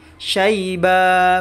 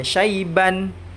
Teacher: Nah, ketika ini saya putus di sini, saya waqaf di sini dan ibtida di washta'ala, syaibanya menjadi syaiba, bukan dibaca syaiban. Karena ini menjadi mad aiwad ya.